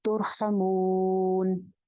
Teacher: अगर पीछे जबर यहाँ पेश होगी तो रॉ मोटी हो जाएगी, पीछे जेर होगी तो रॉ बारीक होगी। तो यहाँ पे रॉ मोटी हो जाएगी क्योंकि पीछे पेश है · मध्य आरिज लगा के इसको लंबा करके वक्फ करेंगे